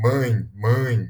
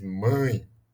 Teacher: Você vê que vem parte do som, vem do nariz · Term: nasal